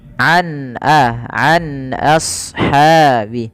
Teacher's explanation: huruf nunnya suaranya terdengar dengan jelas sama sekali, tidak ada penahanan, tidak ada geremeng-geremengan ya, dia jelas an ashabi. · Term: izhar halqi